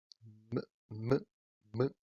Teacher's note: también es bilabial porque usamos los dos labios y además es nasal porque el aire escapa por la nariz